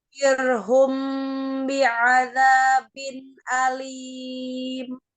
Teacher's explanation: tidak memonyongkan kedua bibir ya, tetap di makhraj huruf shin ya. Itu tengah lidahnya bertemu dengan langit-langit tengah ya, tidak safatain tapi tetap al-lisan.